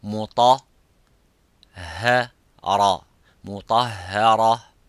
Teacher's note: مطا is the mufakham, which is full mouth. Ra is strong, full mouth. But the ha is empty mouth.